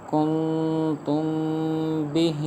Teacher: میم کے اندر اس لیے گنہ کیا کیونکہ میم ساکن کے بعد حرف با آ رہا ہے، تو لہٰذا یہ اخفاء شفوی ہوگا، اس لیے ہم نے گنہ کیا۔